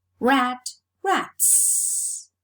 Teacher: It's a case of established progressive assimilation of voice in the realization of the plural morpheme, which is realized as a voiceless sound because the previous sound is a voiceless, non-sibilant sound.